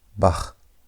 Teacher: It's not k or hat. is right in between the k and the h sound you have the ch sound as in the word bach the German word bach that as if you want to say aha but almost like a hard aa aa you need to practice on how to pronounce this letter and this is how is written.